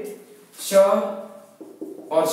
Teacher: अघोष व्यंजन में आते हैं हमारे जिनमें स्वर तंत्र कंपन नहीं होती